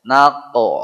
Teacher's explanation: tempatnya qaf di pangkal lidah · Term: huruf qaf